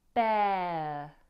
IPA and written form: beə (Bear)